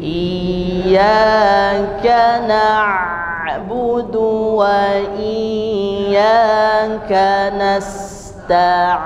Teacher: Jadi mengalirkan huruf ainnya, bainiyah, di antara mengalir dan terhenti